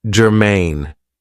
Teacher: this is two syllables and the stress is on the second syllable